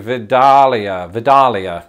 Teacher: the emphasis though is probably going to be on that middle syllable